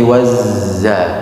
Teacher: ketika bertasydid dibaca dengan jelas tanpa ada desisan ke bunyi s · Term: zai